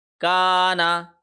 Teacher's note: ہم نے اللہ کے لام کو موٹا پڑھا، ان اللہ کانا، کا کو ایک سیکنڈ لمبا کیا کیونکہ الف مدہ کا قانون لاگو ہو رہا ہے